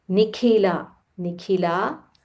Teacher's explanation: Ka is Mahaprana. So, use a little more aspiration.